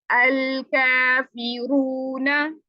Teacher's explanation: वो का से कै बन जाता है